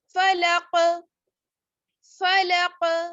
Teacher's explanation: قاف پہ کیا ہوگا؟ قلقلہ ہوگا کیونکہ قاف جو ہے وہ ساکن ہے